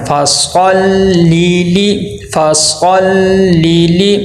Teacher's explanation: زیر کو معروف پڑھنا ہے، مجہول نہیں پڑھنا